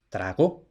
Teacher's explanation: Otra solución para evitar ese hiato raro, trao, era el llamado refuerzo velar, es decir, que se mete una g, quizá por analogía a otras formas donde la g era evolución natural, como por ejemplo digo a partir del latín dico, y por tanto también se mete esa g para evitar decir trao, pues trago.